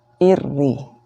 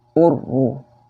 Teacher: ketika menyebutkan ro ini dalam keadaan tasydid, maka getarannya tidak boleh terlalu berlebihan